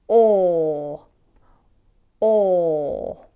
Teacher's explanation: you need to drop the lower jaw a long way to make a big space inside the mouth and round the lips. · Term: OR sound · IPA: /ɔː/